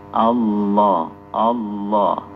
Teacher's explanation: karena sifat lam itu inhiraf, suara itu keluar dari sisi kanan atau sisi kiri. Jadi, bukan dari depan.